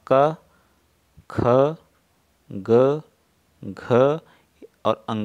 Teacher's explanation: क, ख, ग, घ और अंग, ये सभी हमारे क्या होते हैं, कंठ के द्वारा बोले जाते हैं